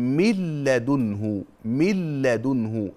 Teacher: لوقوع اللام بعد النون الساكنه واللام من حروف الادغام بغير غنه